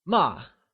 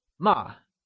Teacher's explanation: it has a rapidly falling pitch like while saying a command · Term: falling tone